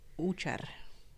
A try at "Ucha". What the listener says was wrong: No R at the end. Just Ucha. Like, sir, it's Usher.